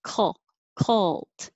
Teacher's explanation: I can make my K at the same time I'm making my L. So the back is doing this, cult.